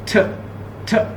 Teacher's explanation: एकदम स्टॉप, हवा निकली, थ, इसे हम प्लोसिव कहेंगे, स्टॉप भी कहेंगे